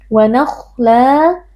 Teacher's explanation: Wa nakhla, la man'i waw karena kita waqaf pada fathatain. Fathatain diganti dengan fathah lalu dibaca panjang dua harokat